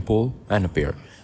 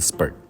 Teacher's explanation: voiceless stops are aspirated when they are at the beginning of a stressed syllable, like in pull and appear, but unaspirated when they preceded by a voiceless alveolar fricative, as in spurt